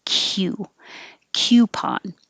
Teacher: with the q, your tongue is starting in a high position and sliding down